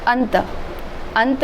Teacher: मतलब उच्चारण करते समय हवा केवल नाक से निकल रही है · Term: अनुस्वार